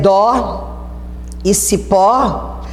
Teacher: a tonicidade se deu na última sílaba